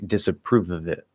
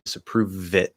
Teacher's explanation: but uh disapprove it one thing that you can do is make that schwa and of like either super super tiny or basically gone and just repeat the v